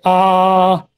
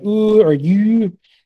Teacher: So you can see near versus back and close versus open. So like, you know, a very open sound might be like ah, a very close sound might be like ooh or you. So that's close versus open.